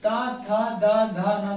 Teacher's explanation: इन 5 शब्दों का उच्चारण करते समय हमें अपने दांतों का इस्तेमाल करना पड़ता है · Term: दंत व्यंजन